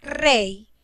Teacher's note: Hay diptongo en la palabra rey, ya que la Y suena como una I.